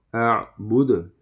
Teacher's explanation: یہ آخر میں قلقلہ ہوگا، ٹھیک ہے. دال میں